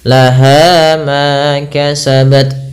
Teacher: dengan huruf alif yang mana termasuk daripada huruf mad mad thi'i hati-hati jangan terlalu panjang dalam pembacaannya Jangan lah Ma kepanjangan Cukup dua harakat saja